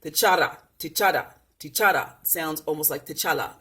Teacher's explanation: the R sound sounds very much like the L and the D when it's rolled